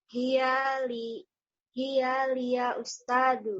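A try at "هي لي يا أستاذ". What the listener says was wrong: Bukan begitu. Linya dipanjangkan. Hiya li ya ustazu.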